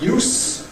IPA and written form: juːs (use)